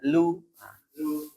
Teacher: lamnya juga jangan sampai tafkhim ya, tebal ya